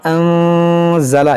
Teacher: नून साकिन के बाद ज़ा है, तो यहाँ पर इख्फा करेंगे, यानी अंज़ला, इस तरह नाक में आवाज़ ले जाकर पढ़ेंगे